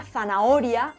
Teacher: En la palabra zanahoria, la O tiene más intensidad que el resto de sílabas.